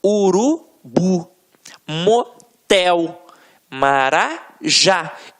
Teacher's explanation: Reparem que na hora da pronúncia, de forma mais aguçada, você vai perceber que realmente a pronúncia da última sílaba ficará mais forte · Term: oxítonas